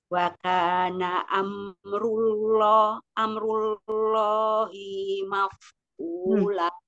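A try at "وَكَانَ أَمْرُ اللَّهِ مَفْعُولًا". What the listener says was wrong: Ini pendek. Masih panjang,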